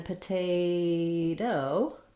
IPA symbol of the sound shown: ɾ